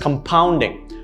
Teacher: the second syllable is stressed